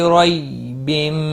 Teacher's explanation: یالین ہے، تھوڑا نرمی کے ساتھ کھینچ کر ادا کریں گے، رو زبر کی وجہ سے پور پڑا جائے گا۔